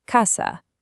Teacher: Both A's have that exact same ah sound. Casa. It's that simple and consistent.